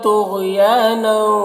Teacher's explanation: طغیان طا اور غین دونوں کو پر پڑھیں گے، حروف مستعلیہ میں سے ہے. یا میں الف مدہ سے ایک الف کے برابر کھینچیں گے. · کفرا را کو پر پڑھیں گے، یہاں پر وقف کریں گے تو ایک زبر کے ساتھ الف پڑھیں گے.